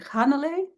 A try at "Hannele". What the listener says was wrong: Yeah, You put the emphasis on the third syllable. Hannele.